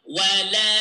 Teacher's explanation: here we have 4 seconds in the alif